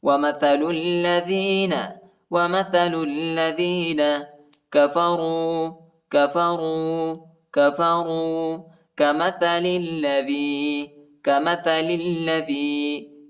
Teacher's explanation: لام کو لام کے ساتھ ملائیں گے، ٹھیک ہے. دوسری لام پر شد آیا ہے